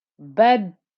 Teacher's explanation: I'm keeping the dal squished for a little bit to show that there's 2 dals. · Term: shadda